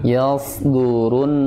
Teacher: Yasdurun ya, tebal isti'la itbaq.